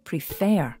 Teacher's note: in the word prefer the second syllable is stressed you can check where the stress is by saying the word